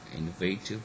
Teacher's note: innovative, where actually the first syllable is stressed, which shouldn't have been. We were expecting the last syllable, wait.